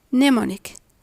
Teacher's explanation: The nasal M is silent before the nasal N, and the N sound is silent after the M sound.